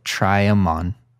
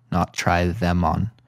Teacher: in fluent everyday speech, the them gets reduced to an M. So we say try 'em on, not try them on.